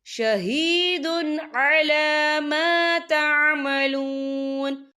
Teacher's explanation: بآیات اللہ واللہ شہید علی ما تعملون، یا دیکھیں شہید، دال کے پر تنوین ہے، تنوین کے بعد جو ہے عین آ رہا ہے، اور عین جو ہے حروف ہلکی کا ورڈ ہے، تو ہم یہاں اظہار کریں گے، ہم اسے بنا غننے کے پڑھیں گے